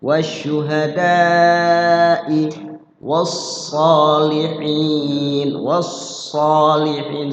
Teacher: Di situ ada panjang matobi, ketemu hamzah dalam satu kalimat. Mat wajib berapa durasinya? 5.